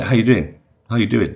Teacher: It's almost like the G suddenly disappears.